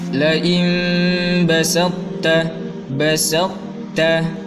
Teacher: Karena to itu ada bunyi tebalnya, makanya la im basatta toknya harus berbunyi, tapi tidak dibaca qalqalah karena idgham atau masuk ke huruf ta. Hanya bunyi huruf toknya saja kita bacakan.